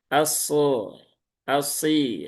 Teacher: Jadi huruf shad dia ujung lidah mendekati gigi seri bawah. Dia satu makhraj dengan huruf sin dan huruf zai.